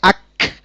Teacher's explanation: এটা বড় কাফের দুই নুক্তাওয়ালা কাফের মত হবে না একটু পাতলা আওয়াজে হবে